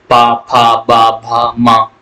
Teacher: हर में ओठ बंद हो रहा है। खुल रहा है। बंद हो रहा खुल रहा है। तो ये आपके ओट्स व्यंजन है।